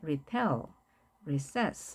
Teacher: retell 같은 경우는 접두사가 있기 때문에 접두사는 강세가 없습니다.